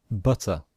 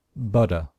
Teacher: And this symbol is only used in American English, okay? And it shows that the letter T in American English sometimes sounds like a letter D. So Americans, in British English, we pronounce this butter, but some Americans pronounce it butter.